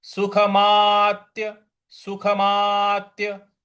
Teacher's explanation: देखिए यहां पे सुखमा, सुखमा सीधा है। इसके बाद जो आधा त है उस पर हमें आघात देना है, बल लगाना है